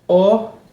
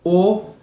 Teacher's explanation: quando eu pronuncio e é um som fechado a letra O Se eu disser ó é um som aberto se eu disser o é um som fechado